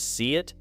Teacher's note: the mouth may glide gently between the long vowel in see and the vowel in it, creating a small Y-like connection that keeps the phrase smooth